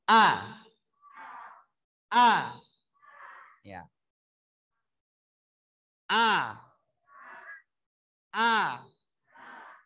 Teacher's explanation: Huruf hamzah makhrajnya ada di pangkal tenggorokan.